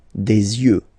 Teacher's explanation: Don't pronounce the final X as usual.